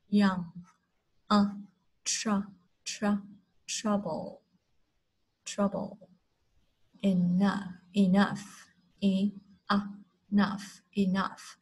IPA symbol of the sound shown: ʌ